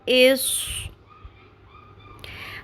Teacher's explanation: صاد کو پر کرنے کے ساتھ سیٹی کی آواز لازمی آنی چاہیے۔